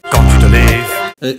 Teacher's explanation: Les V deviennent F, hein, c'est comme ça. Parce que c'est ainsi, c'est la bouche qui est faite comme ça.